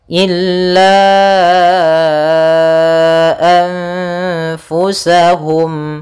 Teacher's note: nun sukun bertemu dengan Fa cara membacanya yaitu nunnya disamarkan kepada huruf Fa seperti itu sambil ditahan gunahnya illa anfusahum Kemudian pada lafal mim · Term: ikhfa